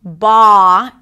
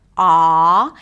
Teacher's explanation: It happens and goes towards the back of the mouth because you drop your tongue, you drop the root of the tongue, and the voice resonates in the back.